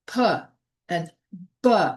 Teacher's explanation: bilabials, both lips come together like P and B. Therefore, two lips bilabial.